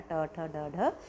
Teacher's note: मूर्धन्य ध्वनियाँ कौन सी होती है, मूर्धा से इनका उच्चारण होता है, तो ट वर्ग आपका पूरा आता है